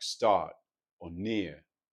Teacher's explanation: So a word like start or near becomes more like start or near. So the R is sort of gone, or I almost like to think of it as a soft R. · Well, there's an older, so oftentimes African American accents are non-rhotic, meaning that the R's after vowels get dropped